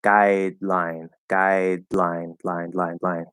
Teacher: it's like a soft little D, and then you just open up the sides so that the L comes through.